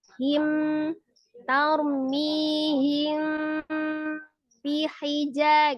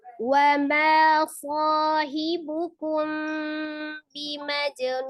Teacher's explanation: Jadi ditahan mimnya itu ditahan ya sekitar antara 2 sampai 3 harokat. Jadi dikunahkan dengan disamarkan. · Kalau ini mimnya tidak diidghamkan ke ba, jadi tidak langsung ditasdid ke ba, tidak. Tapi tetap dibaca mim sukunnya dengan izhar, dengan jelas, tetap mim dibaca dengan jelas. Ya, tetapi tidak ditasdidkan, hanya dikunahkan saja, jadi tidak diidghamkan ke ba.